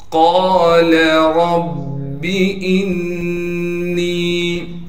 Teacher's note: قاف کو موٹا کر کے پڑھیں گے اس لیے کہ قاف موٹے حروف میں سے ہے